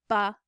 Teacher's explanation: labial means lips so it goes ba so it involves place on the lips and it's a complete stop of airflow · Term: labial stop